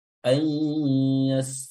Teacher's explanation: Nah, di sini hukumnya adalah idgham bi gunnah. Ya, meleburkan atau memasukkan nun sukun ke huruf ya, jadi nun sukunnya hilang